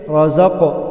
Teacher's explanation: قاف حروف قلقلہ ہے، یہاں قلقلہ ادا ہوگا